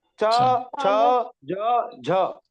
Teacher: चा वर्ग भी कहा से बोला जाता है तालव्य से